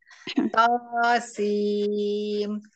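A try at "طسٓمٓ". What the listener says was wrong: sin, bukan sim, sin. Huruf aslinya itu, huruf aslinya, baca huruf aslinya. Sin. Bukan sim, sin. Sin, sin. Huruf aslinya sin. Kurang panjang. Kurang panjang. Lima harokat. Lima sampai lima harokat.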